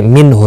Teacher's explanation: نون ساکن کے بعد ہلکی ہا آیا ہے، اظہار ہلکی ہوگا، یعنی نون ساکن کو ظاہر کر کے پڑھیں گے۔